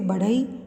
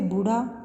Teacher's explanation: हिंदी की मूर्धन्य महाप्राण सघोष उत्क्षिप्त ध्वनि है। इसका विकास प्राचीन भारतीय आर्य भाषा की ध, द, ठ ध्वनियों से हुआ है।